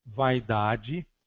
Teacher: Vogal mais semivogal. Vaidade, o a da sílaba vai é vogal e o i é semivogal